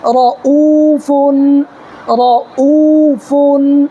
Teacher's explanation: دیکھیں اس را کو بھی پر پڑھیں گے، اس لیے کہ را کے اوپر زبر ہے، را کے اوپر زبر یا پیش ہو تو را کو پر پڑھیں گے، اور یہ واو ساکن ہے، واو ساکن سے پہلے حمزہ کے اوپر پیش ہے تو وہ مدہ ہوگا، اس کو ایک الف کے برابر کھینچ کر کے پڑھیں گے